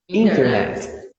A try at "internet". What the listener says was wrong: Não tem o T, não é inter, é só inner.